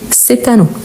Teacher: à partir du moment que j'ai un mot qui commence par voyelle ou H muet, je dis cet anneau. Donc je prononce le T.